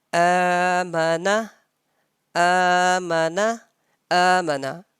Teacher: Because of long vowel, because of standing fatha, right? I'm stretching and I'm prolonging that alif for 1 second. Amana, amana, and meme, and at meme and noon, these fathas are simple.